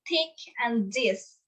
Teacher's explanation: interdentals, formed by putting the tongue between the teeth, like the and the sound.